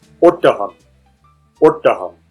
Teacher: This is a sound you can't really find in English. It sounds a bit like the O in thought or court, but it's shorter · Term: short sound